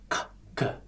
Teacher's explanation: Rasakan bahwa tenggorokan kita tertutup sebentar.